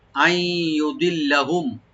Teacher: এখানেও এদগাম উইথ গুন্না হবে, নুন সাইন পরে ইয়ে আসছে